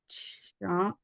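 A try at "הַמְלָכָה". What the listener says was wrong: No, we don't do chuck. There's not a chuck in Hebrew. Yeah, there's no chuck. Ham la chim. Ham la chim.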